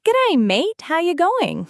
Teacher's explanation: they have that rising intonation that makes everything sound like a question.